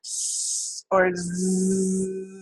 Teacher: And air is flowing out of the mouth, but when it gets to this area where the tongue is really close, but not quite completely shutting off the airflow, it gets all turbulent. You get this hissy sound that is not as easy to hear with the zzz, but you can really hear it with the s. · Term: fricatives